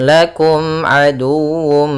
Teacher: mim mati bertemu Ain kita baca dengan bacaan izhar syafawi suara mimnya harus jelas kemudian aduwum Nah di sini harus dibaca juga dengan sempurna wwnya